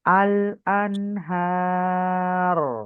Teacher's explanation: রটা heavy করে audible করতে হবে